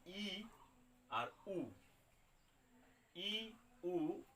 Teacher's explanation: ই উ উচ্চারণকালে আমাদের মুখ বিবরের আয়তন সবচেয়ে কম থাকে। যেমন আ উচ্চারণ করলে মুখটা যতটা প্রসারিত হচ্ছে, যতটা খুলছে, গোটা মুখটা যতটা আমরা খুলছি, ঠিক একইভাবে ই আর উ উচ্চারণ করতে গেলে কিন্তু অনেকটাই কম আমাদের খুলতে হচ্ছে। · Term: সংবৃত স্বরধ্বনি